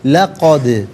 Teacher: دال ساکن ہے لیکن حرف قلقلہ ہے، آواز لوٹتی بھی محسوس ہونی چاہیے